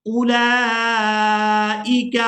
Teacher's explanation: इस वाव को भी अदा नहीं करेंगे, ये वाव भी साइलेंट ही रहेगी। इसकी वजह यह है कि इस वाव के ऊपर कोई हरकत नहीं है।